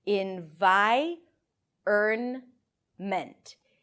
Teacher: the vowel is actually pronounced before the R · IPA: ɪn-ˈvaɪ-ərn-mənt